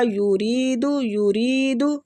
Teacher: را کو کھینچیں گے باریک پڑھیں گے